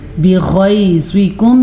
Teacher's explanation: بغیظکم میں غین بھی موٹا پڑ جائے گا اور زوا بھی موٹا پڑ جائے گا کیونکہ یہ حروف مستعلیہ کے پارٹس ہیں.